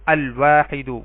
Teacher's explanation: واو حروف قمری میں سے ہے تو ال کا لام پڑھا جائے گا